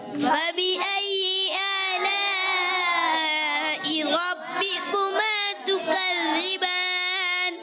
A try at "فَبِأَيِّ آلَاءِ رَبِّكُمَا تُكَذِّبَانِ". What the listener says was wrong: یہ دیکھیں مد ہے، آپ نے مد کو کم کھینچا ہے. مد کو کتنا کھینچنا ہے؟